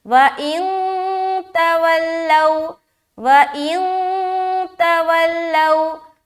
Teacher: واولین کریں گے، کیونکہ واو ساکین ہے اور اس سے پہلے زبر ہے، لہٰذا نرمی کے ساتھ جلد ادا کریں گے